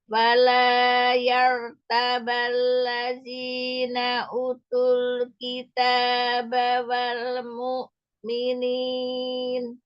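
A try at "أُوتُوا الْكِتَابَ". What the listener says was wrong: Perhatikan panjang pendeknya. Ulangnya kepanjangan. Kemudian tadi utul U-nya mad. U-nya mad ya, 2 harakat. Wala yartabal ladzina utul kitab. U-nya mad.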